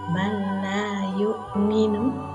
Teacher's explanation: Yang ketiga adalah man la yu'minu, nun sukun bertemu dengan lam. Hukum bacaannya adalah idgham bila gunnah. Cara membacanya tanpa mendengung.